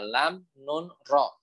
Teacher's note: Semuanya sama, ujung lidah bertemu dengan langit-langit depan.